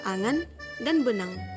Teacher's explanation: Fonem ini direalisasikan sebagai bunyi eng, baik berposisi sebagai onset maupun sebagai koda pada sebuah silabel